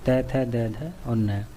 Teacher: जीभ दांतों को छूती है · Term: दंत्य वर्ग